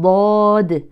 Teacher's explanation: ضاد بتفخيم الضاد وترقيق الدال مع القلقله وكما سمعتم هو حرف مفخم والتفخيم والترقيق يبدا من اسم